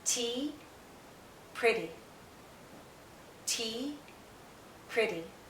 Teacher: this first syllable is stronger this second half is weaker it's not stressed